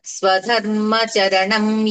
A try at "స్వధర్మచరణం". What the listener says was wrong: అక్కడ పెదాలు కలిపేస్తున్నారు మీరు. పెదాలు కలపకూడదు.